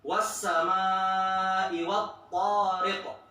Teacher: pas huruf sinnya ada tapi huruf to nggak ada suaranya kan? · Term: syiddah